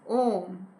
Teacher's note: तीसरा आता है प्लुत स्वर। इन स्वरों के उच्चारण में तिगुना समय लगता है।